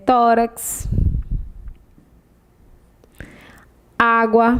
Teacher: é paroxítona a sílaba mais forte é a penúltima sílaba